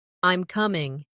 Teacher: when you make a statement, your voice falls slightly. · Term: intonation